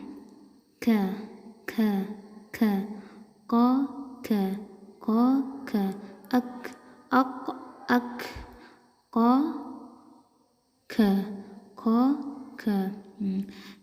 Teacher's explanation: Huruf K ini ada hembusnya sedikit ya. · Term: huruf kaf